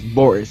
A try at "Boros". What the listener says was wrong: Boris. pronouncing it like it's B-O-R-I-S, when in reality it's B-O-R-O-S.